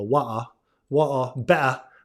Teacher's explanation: a lot of Brits also say the glottal stop